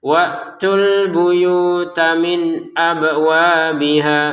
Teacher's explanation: asalnya wtu ini panjang ya, dua harakat. Tapi karena di depan ada sukun ya, kita pertemukan jadi tidak panjang